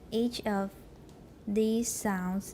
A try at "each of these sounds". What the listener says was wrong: these 不要那么重。Each of these sounds.